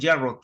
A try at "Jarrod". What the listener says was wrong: Parece como si fuera gringo estadounidense. Con Y, como si fuera una Y la J. Yarok.